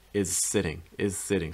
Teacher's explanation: can link them together if you want is sitting is sitting starting off with like a zoo sound and then transitioning to an s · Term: linking